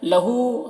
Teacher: ہا میں الٹا پیش ہے جو واو مدہ کی طرح ہے، اسے بھی ایک الف کے برابر کھینچیں گے